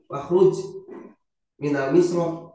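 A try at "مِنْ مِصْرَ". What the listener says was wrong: min misra enggak ada alif lah min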